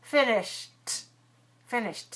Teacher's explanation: Finish, sound at the end, shh, shh, voiceless. So finish plus ED, finished, finished.